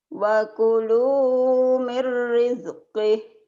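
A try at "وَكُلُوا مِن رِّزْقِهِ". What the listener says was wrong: Jangan ada e-nya ya. Wakulu mir rizkih. Jangan rizkih. Ah, jangan ada e-nya.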